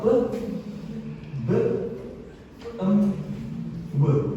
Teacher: Bibir atas dan bibir bawah itu mengartikulasikan keempat suara tadi.